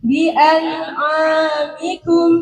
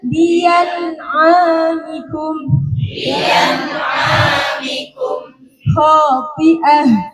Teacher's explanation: Ibdal itu diganti ya. Jadi hamzahnya yang asalnya a menjadi ya. Jadi bukan tersil, bukan antara lagi kalau ini.